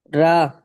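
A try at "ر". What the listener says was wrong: জি, রা হবে না, এটা হবে র, পুর হবে।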